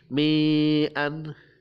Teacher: Marji'ukum, mim sukun bertemu jim, adalah bacaan idhar lagi, idhar safawi. Mi'an, mi dibaca panjang, mat tabi'i